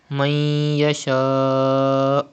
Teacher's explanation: The rule idgham will be done because ya is from yarmalun letters and gunna will be done. And there is hamza after alif madda in the same word. Madde muttasil will be done. You have to stretch up to 5 harakat.